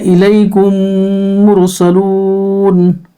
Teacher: मीम साकिन के बाद फिर दूसरा मीम आए तो मीम को मीम से मिलाकर गुन्ना के साथ पढ़ा जाएगा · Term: इदगाम शफवी